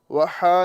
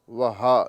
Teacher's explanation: یہ ہا حلق کے نیچے والے حصے سے ادا کیا جاتا ہے۔